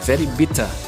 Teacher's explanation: huruf R di akhir kata tidak dibaca, ya, atau silent